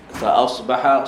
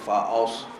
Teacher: Fa asbaha, sama juga. Fa asbaha, sad tebal tetapi hamzah sentiasa nipis. Jangan fa'as, itu tebal.